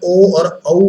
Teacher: ओ और औ बोलते हुए कंठ ओष्ठ का इस्तेमाल होता है।